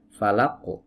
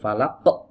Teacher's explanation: dipantulkan biasa saja tanpa menutup pita suara. Ini kalau ditutup falaq, nah ini ditutup pita suaranya muncul Hamzah ya.